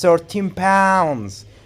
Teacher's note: you have to put the stress on pounds